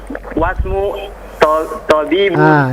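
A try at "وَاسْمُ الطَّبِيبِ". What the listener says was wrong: Disambung. Wasmut, disambung dengan ta-nya. Wasmut. Wasmut tabibi.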